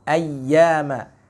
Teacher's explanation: ya-nya tetap diberikan rokhawah, ya, mengalir walaupun tertahan.